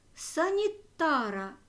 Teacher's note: ар в родовому відмінку наголошений